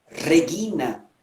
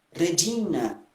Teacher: a pronúncia do R, que é vibrante, múltipla no latim restaurado, na pronúncia eclesiástica, algumas vezes ele é apenas uma vibrante simples. Por exemplo, eu digo Regina, restaurado.